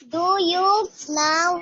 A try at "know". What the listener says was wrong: Do you know नहीं, ये now है. नहीं, सॉरी, आपने बोला now नहीं बेटा, ये no है. Do you know? KNOW, K आपका साइलेंट लेटर रहता है.